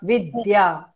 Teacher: विद्या म्हणताना वी वर आपोआप आघात येतो, कारण पुढे द्या हे अक्षर जोडाक्षर आहे